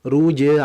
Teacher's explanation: sifatnya qalqalah. Harus dipantulkan.